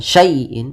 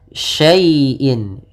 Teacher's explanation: syai' di sini lembut ya-nya, jangan dihentak, jangan syai'in, tapi syai'in.